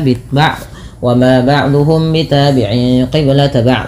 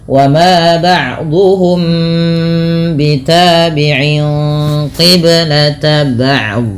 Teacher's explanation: Pada lafal ba'duhum bi ada mim mati bertemu dengan huruf ba. Ini merupakan bacaan ikhfa syafawi, perlu ditahan dalam membaca nya.